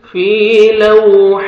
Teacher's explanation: ٹھیک ہے، یا مدہ 1 سیکنڈ، فا کو کھینچتے ہیں اپنے، لو واو لین ہے، واو ساکن سے پہلے فتح ہے، نرمی سے ادا کریں گے